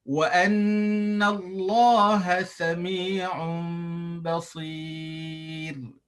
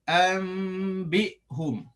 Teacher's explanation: tanwin bertemu ba itu hukumnya iqlab, dengung dan ditukar nun ataupun tukar tanwin kepada huruf mim